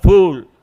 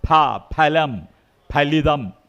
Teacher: ഫലം ഫലിതം എന്നൊക്കെ കഫം എന്നൊക്കെ പറയുമ്പോൾ ചുണ്ടുകൾ തമ്മിൽ തൊടണം